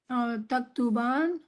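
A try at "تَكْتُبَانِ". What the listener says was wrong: It's just not pronounced usually, but there's a kasra here. Taktubani.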